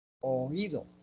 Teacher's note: La I cerrada tiene más fuerza que la O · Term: hiato acentual